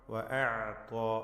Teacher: വഅഅത ഐന് ത്വാ, ഐനിൻ്റെ മഖ്റജ് മാറിപ്പോവാതെ ശരിയായ വിധത്തിൽ ഉച്ചരിക്കുക. തൊണ്ടയുടെ മധ്യത്തിൽ നിന്ന് ഐന് തവസ്സുത്തിൻ്റെ അക്ഷരമാണ്. വഅഅത ത്വാഉം അതിൻ്റെ അലിഫും രണ്ടും തഫ്ഖീം ചെയ്ത് പെരുപ്പിച്ച് വഅഅത ത്വാ എന്ന് പറയണം, ത്വാ അല്ല.